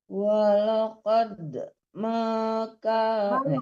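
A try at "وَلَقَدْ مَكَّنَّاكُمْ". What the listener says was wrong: Jangan maju di mak, kan tasdid kafnya, ditekan ke kaf.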